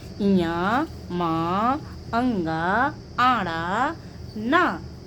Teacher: नासिका इनका उच्चारण स्थान है अर्थात नाक से बोले जाते हैं